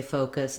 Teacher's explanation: it's not that i'm saying an oh and an uh separately i'm just holding my o uh a long time and relaxing and closing the jaw as i go